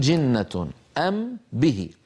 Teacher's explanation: الميم من الشفتين والباء من الشفتين، فبدلا من أن نعيد الوصول إلى نفس المكان مرتين، بدلا من أن نقول أم به انظروا إلى شفتي، أم به، أم به، أم به، بدل أن نذهب مرتين نقول أم به، نطبق على ميم ونجافي الشفتين عن باء.